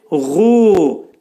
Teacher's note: Bu hərf boğazın yuxarısından çıxarılacaq